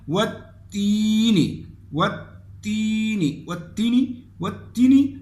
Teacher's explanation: یا مدہ میں ایک الف کے مقدار پہ مد ہوتا ہے. والتینی والتینی والتینی والتینی اگر کوئی پڑھے گا اور یا کو وہ تھوڑا لمبا کر کے نہیں پڑھے گا تو یہ لفظ غلط ہو جائے گا.